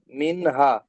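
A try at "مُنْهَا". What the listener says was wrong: মুনহা, মিম নুন পেশ মুন বললেন না, মুনহা। সাকিন এসছে, সাকিনের অক্ষরকে,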